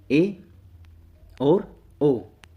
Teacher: आधा बंद रहता है। जिन स्वरों के उच्चारण में मुख द्वार आधा बंद रहता है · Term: अर्ध संवृत